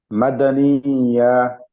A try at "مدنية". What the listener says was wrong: मदनिया, इसको 5 दफा पढ़ें। मद नहीं करें, मीम जबर मा, दाल जबर दा, मदा। मदा मदनिया।